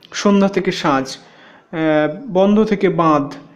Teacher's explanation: আনুনাসিক ন লোপটি পাচ্ছে, পূর্ববর্তী দীর্ঘ হয়ে অনুনাসিক আতে পরিণত হচ্ছে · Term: নাসিক্যী ভবন